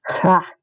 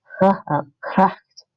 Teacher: Now the G in Dutch is like this consonant sound, and it's like the Scottish CH or the German CH, but the G in Dutch is actually voiced. So you want to voice that G in Dutch.